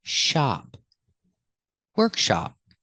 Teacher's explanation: it has this short a sound it's open like stop and hot